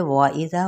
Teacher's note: واو ہونٹوں کی نا تمام گلائی کے ساتھ